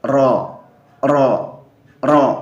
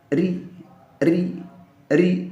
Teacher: ro yang dibaca tebal ketika ro berharokat fathah